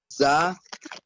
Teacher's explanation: Za, light and hard. There will be a little gap between the upper and lower teeth. Za will have a whistling sound. It has a Z sound in it.